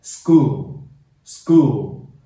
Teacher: S 开头后面立刻跟的是清辅音，把清辅音变化成对应的浊辅音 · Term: 清辅音变浊辅音